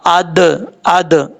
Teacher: اس کے بعد حمزہ زبر دال اد، را کھڑا زبر را، اد را. دال حروف قلقلہ میں سے ہے، یہاں پہ قلقلہ ہوگا، اد اد، اس طریقے سے.